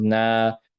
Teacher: It's a short vowel. Now this alif sakina makes this fatha longer and becomes na for 2 seconds